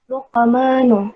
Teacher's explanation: Karena terdapat ada huruf qaf berharokat sukun dalam satu kalimat itu bertemu dan cara membacanya memantul kecil. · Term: qalqalah sughra